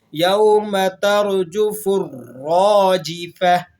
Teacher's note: یوم را کو موٹا ادا کریں گے،